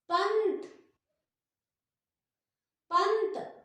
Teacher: अनुस्वार में जीभ ऊपर लगी, मुंह की वायु को बंद किया उसने और सारी वायु जो है वो नाक से बाहर निकली